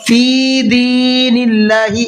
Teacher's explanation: اللہ کے نام کو باریک کر کے پڑھیں گے، اس لیے کہ اللہ کے نام سے پہلے زیر ہے نون کے نیچے۔